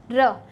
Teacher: लुंठित वर्ण भी कहते हैं क्योंकि ये मुख से लुढ़कता हुआ सा बाहर निकलता है